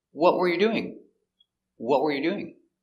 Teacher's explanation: We stress the important word, what? The question word is the important word.